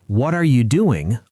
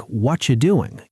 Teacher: What are you doing? Often sounds like what you doing in casual speech. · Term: connected speech